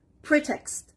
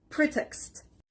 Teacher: The stress is on the first part